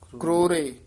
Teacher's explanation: ਕਰੋਰੇ ਰਾਰਾ ਪੂਰਾ ਨਹੀਂ ਬੋਲਣਾ